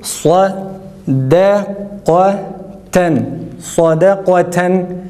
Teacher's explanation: Öyleyse sadda a, dalda kafta yine a, ta'da ise e sesi çıkararak okuyacağız.